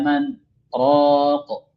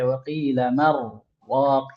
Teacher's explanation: Nah, ketika kita saktahkan di situ, maka nun mati yang seharusnya ketika bertemu dengan ra itu hukumnya idgham, maka tidak ada idgham, diizharkan.